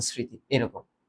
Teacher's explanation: কিন্তু চন্দ্রবিন্দু যুক্ত হবে। ম ফলাটা কি করবে? নাকে তৈরি করে দিবে। নাসিক্য করবে। · ম ফলা যদি আদিতে থাকে তাহলে সেটা অনুচ্চারিত থাকবে